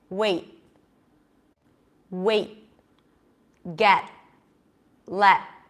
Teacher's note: It's the same sound, like writer, like butter. T's at the end of words are held, okay? So it's kind of like you're not even releasing it.